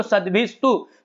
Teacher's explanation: कह रहे सद्भिस्तु, यहां पर संधि है, मूल शब्द है सद्भि, विसर्ग और विसर्ग के बाद है तू त, तो विसर्ग के बाद त और थ आ जाए तो वहां पर हो जाता है दंत्य स, जिसे आप सब्जी वाला स बोलते हैं।